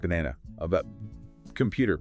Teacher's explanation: it's just that relaxed neutral uh sound in unstressed syllables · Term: schah sound